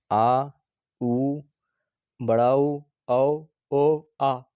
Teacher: इसमें जीभ का पिछला हिस्सा काम करता है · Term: पश्च स्वर